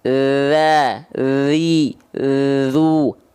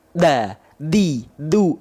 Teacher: Bedakan yang pertama la, li, lu ngalir suaranya. Kalau digigit da, di, du.